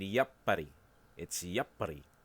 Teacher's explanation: This is just a symbol of a pause with no sound between two syllables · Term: sokwon